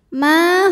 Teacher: cara bacanya adalah mim dipanjangkan dua harakat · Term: Mad Thobi'i